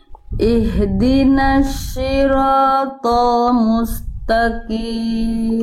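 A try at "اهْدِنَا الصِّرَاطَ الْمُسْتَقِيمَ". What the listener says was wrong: Oke, pertama Bunda huruf short tebalkan lagi. Si. Bukan shin, si. Nah, jadi cara melafalkan short itu kayak kita bilang huruf S.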